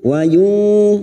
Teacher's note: kita samarkan bunyi nun sukun dan mendengung selama 3 harakat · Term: ikfa hakiki